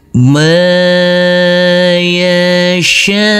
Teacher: huruf syin kita baca kurang lebih 4 sampai 5 harakat. Huruf mim juga kita baca kurang lebih 4 sampai 5 harakat.